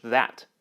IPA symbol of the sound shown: ð